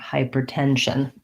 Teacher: The main stress is on the 10 of tension, secondary stress on the first syllable of hyper